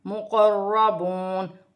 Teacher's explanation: مقربون, را مشدد ہے, زبر بھی ہے, را موٹی پڑھی جائے گی. مقربون, واو ساکن سے پہلے پیش ہے تو واو مدہ بنے گی, اسے ایک الف کی مقدار کھینچ کر پڑھا جائے گا